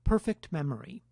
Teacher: the release of the t is accompanied by aspiration, which might well cover the time between the two words, leading to a perception on the part of the listener of fairly continuous speech.